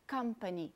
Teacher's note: a bolinha maior em company mostra que a primeira sílaba é a sílaba tônica